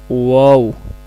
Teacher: یہ واو جو ہے دونوں ہونٹوں کو گول کرنے سے ادا ہوتا ہے